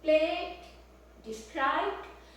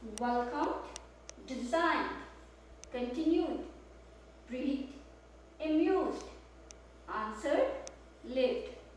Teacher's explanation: so you are adding just a slight d in the end. It's not an extra syllable, just a slight sound.